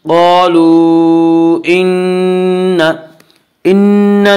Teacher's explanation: نون مشدد غنہ ہوگا، غنہ کی مقدار 1 الف ہے